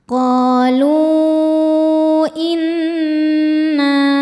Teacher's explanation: nun tasydidnya dihukumi dunah musyaddadah karena nun bertasydid. Cara bacanya berdengung. Dengungannya tahan kurang lebih dua harakat. Inna na hukumnya mad thobi'i zohiri sebab ada alif sebelumnya baris fathah. · Maka lamnya panjang boleh empat atau lima harakat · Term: mad jaiz munfasil